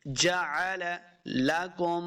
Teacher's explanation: اس کاف کو موٹا نہیں کریں گے